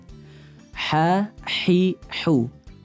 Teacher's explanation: Sedangkan huruf ha yang lurus, ya, makhrajnya berada di tengah tenggorokan.